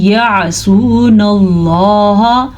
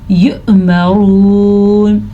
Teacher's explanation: زیادہ جھٹکا زور سے نکالیں گے تو عین بن جائے گا یعنی کہ یؤمرون نہیں ہے یہ ہے یؤمرون.